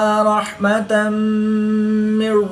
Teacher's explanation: 2 زبر کی تنوین کے بعد میم حروف یرملون میں سے ہے تو یہاں پر ادغام مع الغنہ ہوگا یعنی غنہ کر کے پڑھیں گے۔